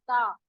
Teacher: इसी तरह जब आप पढ़ते हैं ता से अलिफ जबर ता, तो आप देखते हैं कि ता पढ़ते हुए आपकी जबान जो आगे वाला पोर्शन है, नोक है, वो जबान के ऊपर वाले तालू वाले हिस्से से टच करती है दांतों के पास, तो ये उसका मखरज हो जाता है।